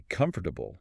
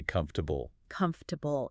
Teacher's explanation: The or sound almost completely disappears. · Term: swallow the syllables